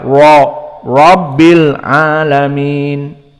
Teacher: Ra idza fathah huwa mufakhamah, maka dibaca ra rabbil alamin. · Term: ra mufakhamah